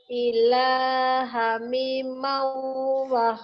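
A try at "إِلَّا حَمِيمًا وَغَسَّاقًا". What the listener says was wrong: illa, bukan ilha, tasdid. Illa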